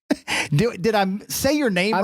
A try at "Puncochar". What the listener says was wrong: I think you added like 3 syllables. It's Puncochar. Puncochar.